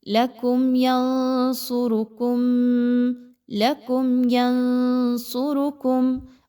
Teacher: میم ساکن کے قواعد میں سے اظہار شفوی، آپ نے یہاں پہ غنہ نہیں کرنا